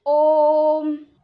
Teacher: प्लुत स्वर में इसका 3 गुना समय लगता है